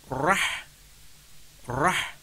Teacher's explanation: The letter of ra that is with sabdu then read fathah with a thick sound and then muted the sound of the letter of ha with the hissing sound